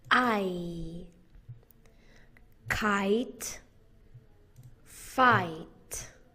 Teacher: we're gliding from one sound, ah, up to the other vowel, e, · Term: diphthong